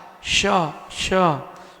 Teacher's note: शक्कर वाला शा यानी तालव्य शा